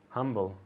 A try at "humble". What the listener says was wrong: Humble. Humble, all right? Not h. Remember that sound from here? Doesn't exist in English. It's a very soft H. Humble.